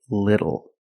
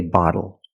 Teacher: When you see TLE or TTLE, phonetically the T is between vowels. And for this reason, the T changes to a fast D in American pronunciation.